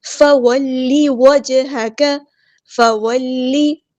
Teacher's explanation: ہم نے لام کی زیر کو لمبا نہیں کرنا